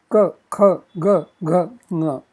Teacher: Row 4, kanthya, consonant sounds, which emanate from kanthaha, the throat